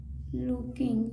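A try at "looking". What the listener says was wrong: देखिए इन्होंने बहुत अच्छी तरह से पढ़ा लुकिंग।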